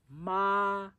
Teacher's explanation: that's a flat or kind of high pitch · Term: first tone